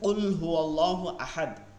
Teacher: কুল কফের উচ্চারণটা ভারী হয়